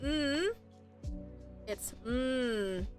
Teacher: for turn N is a it is a voice consonant so if you touch your throat and you say m it's m so your throat should vibrate